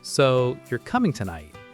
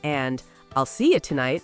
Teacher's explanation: Practice going up at the end of questions. Your voice rises when asking something. And falls when making a statement. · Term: intonation